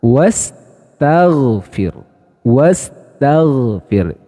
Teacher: huruf gain itu memiliki sifat jahar nafas tertahan namun suara yang mengalir · Namun dari sisi sifat, huruf ghain itu memiliki sifat rokhawah atau mengalirnya suara saat mengucapkan hurufnya. Jadi nafasnya tertahan, namun suaranya mengalir, teman-teman.